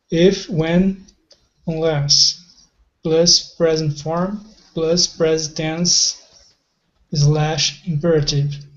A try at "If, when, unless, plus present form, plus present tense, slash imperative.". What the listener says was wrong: Perfect. Nicely read. Really good pronunciation.